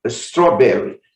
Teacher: Gente, muita atenção para essas palavras que começam com S seguido de consoante. Você não vai colocar um I nem um E antes desse S. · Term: som S